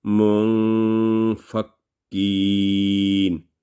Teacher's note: So fa is not third letter, so there will be 2 second nasal sound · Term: Ikhfa rule